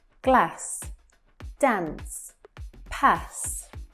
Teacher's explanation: generally in Britain, you'll hear words like glass, dance, pass, with a shorter A sound